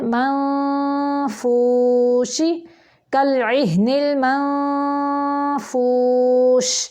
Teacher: نون ساکن کے بعد فا ہے تو فا کی شکل یعنی شیپ دے کے آواز کو نکالنا ہے